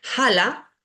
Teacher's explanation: la H Nunca es muda en sánscrito se pronuncia como veíamos en el alfabeto parecido a nuestra J pero suave